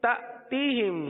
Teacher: حمزہ ساکنہ پر جھٹکا دیں گے تأتیہم. با زیر بی، حمزہ کھڑا زبر آ، بی آ.